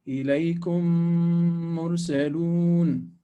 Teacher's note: we close the lips. We don't leave the small opening because we're not trying to hide the quality of the meme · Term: Idgham shafawi